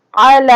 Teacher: اور عین کو ہم کھینچ کے نہیں پڑھیں گے، یہ زبر کی تختی ہے، تو زبر اور زیر اور پیش کو میں نے بتایا تھا کہ کھینچ کے نہیں پڑھتے ہیں۔ عین زبر آ کو نہیں کھینچیں گے، لام کھڑا زبر لا کو ایک الف کی مقدار کے برابر کھینچ کے پڑھیں گے۔